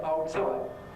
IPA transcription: ˈɒo ˈtsɒɪʔ